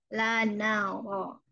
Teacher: Yang naik adalah punggung ujung lidah ke gusi ya, ke gusi.